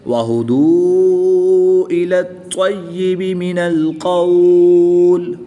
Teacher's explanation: طا حروف قلقلہ میں سے ہے اور یہ مشدد ہے، تو اس میں قلقلہ خوب جماؤں کے ساتھ کریں گے۔ اس کو قلقلہ کبریٰ کہتے ہیں۔